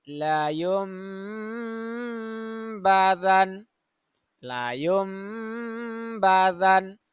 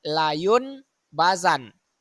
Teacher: menukar bunyi nun mati atau tanwin dengan bunyi mim contoh laayumbadan laayumbazan jadi nun mati itu kita ganti bunyinya dengan · Iklab secara bahasa artinya memindahkan, yaitu apabila nun mati atau tanwin bertemu dengan huruf iklab ba, maka cara membacanya yaitu dengan menukar bunyi nun mati atau tanwin dengan bunyi mim. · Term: iqlab